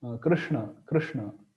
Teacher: the upper sha is known as cerebral sha or murdhanya sha, where the tongue is touching the upper roof behind palate, behind talu, and this sha is pronounced at the place, the palate.